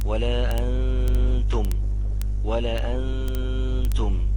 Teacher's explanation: النون دي في وسط الكلمة اهي مش عليها اي تشكيل، لا تنطق وتتمد حركتين